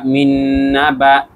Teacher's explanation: মিন এখানে ওয়াজিব গুন্না নুনের উপরে তাসদি তাই